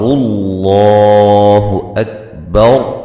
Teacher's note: لفظ اللہ کو اسم جلالہ ہے، اس کو موٹا کر کے ادا کرنا ہے